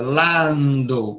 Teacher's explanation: O A aberto, o N tocando no dente.